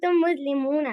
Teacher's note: आपने नून लंबा कर दिया, नून लंबा नहीं करना था